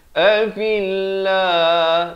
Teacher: Lafz jalalah di sini dibaca nipis